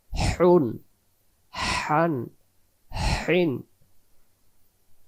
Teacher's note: লম্বা হা হলকের মধ্য থেকে শস করে পড়তে হয়